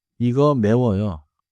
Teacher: Rise a little at the end — it's a question.